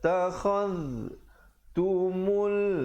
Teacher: Takhadh tumul, mim baris depan terus naik di atas lam. Di situ alif lam qamariyah, lamnya disebutkan dengan jelas. Tumul ainj, ada pantulan qalqalah di situ.